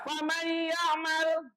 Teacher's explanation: Nah, masuk ke dalam huruf setelahnya dengan dengung. Kayak ada tasdidnya. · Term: idgham bihuna